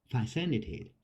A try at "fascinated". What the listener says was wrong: well actually you pronounced fascinated fascinating yeah fascinated